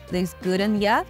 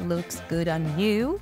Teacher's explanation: So we shorten this you to ya. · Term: connect speech